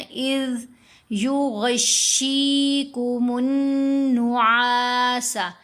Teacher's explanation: یہاں ذال کو ساکن بھی پڑھنا ہے، نرم بھی پڑھنا ہے · عین کو 2 حرکات کی مقدار لمبا کریں گے، نون کے اوپر ہم نے غنہ کیا